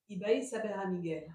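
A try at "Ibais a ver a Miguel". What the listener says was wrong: Y vais a ver a Miguel. Te salió muy francesa.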